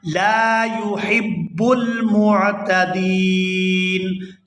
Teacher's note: لا يحب المعتدین، یہاں وقف کریں گے تو وقف کی صورت میں نون جو ہے یہ ساکن ہو جائے گا۔ دال کو یا ساکن اور نون ساکن کے ساتھ ملا کر ادا کریں گے۔ · وَلَا تَعْتَدُوا إِنَّ اللَّهَ إِنَّ اللَّهَ لَا يُحِبُّ الْمُعْتَدِينَ، یہاں لام کے ساتھ الف مدہ ہے، الف خالی ہو اور اس سے پہلے زبر ہو تو وہ الف مدہ ہوتا ہے، اور اس کے ساتھ بھی جو حرف ملے اسے کھینچ کر ادا کرتے ہیں۔ تو یہاں لام کو الف مدہ کی وجہ سے کھینچ کر ادا کریں گے۔